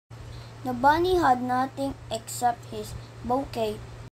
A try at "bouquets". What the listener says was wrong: The word bouquets was once again pronounced as bouquet.